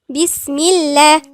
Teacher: الميم هنا مكسورة، يبقى اللام بتاعت لفظ الجلالة الله هتكون ايه؟ هتكون مرققة